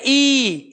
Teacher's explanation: जब हम ई का उच्चारण कर रहे हैं तो जीभ जिससे हम नमक चखते हैं, जो आगे वाला हिस्सा जीभ का है वो वाला टच करता है। और ऐसे ही फिर हम करेंगे ई, इसको थोड़ा लंबा खींच देंगे, ठीक है।